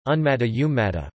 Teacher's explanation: In a sequence of two dissimilar nasals, the first nasal assimilates to the second nasal